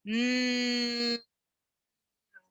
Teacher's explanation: nasals, where the air is actually coming through your nose, and you can hold a mm for as long as you like because the air is coming out of your nose.